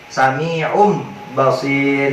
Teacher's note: Jadi di depannya ain ada huruf mim. Nah, huruf mimnya itu adalah perubahan daripada tanwinnya yang berubah menjadi huruf mim ketika bertemu huruf ba